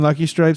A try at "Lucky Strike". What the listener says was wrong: You have Lucky Strike cigarettes written down, right? Not no P. This is with a K.